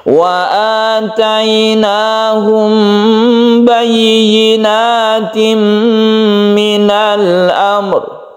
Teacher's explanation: Jadi roknya disukun juga ketika kita berhenti di sini. Mim mati bertemu dengan ba, ini kita panjangkan ikhfa syafawi, kemudian idgham bi gunnah ini juga kita panjangkan karena dia itu gunnah atau berdengung bi gunnah ya, dengan dengung.